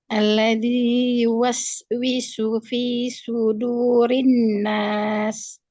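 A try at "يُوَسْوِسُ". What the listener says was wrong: Oh, itu sin yang pertama dumah dengan sol itu sama kedengarannya. Jadi jangan sampai sin yang itu ya sin yang dumah habis yuwaswisu. Jangan yuwaswisu. Salah.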